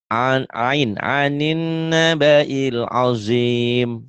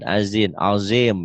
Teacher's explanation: Kalau lupa nutup mulut kedengarannya azin, azim ya. Jadi bunyi ujungnya M, jangan N.